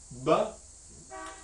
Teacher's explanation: We call this one a voiced labial stop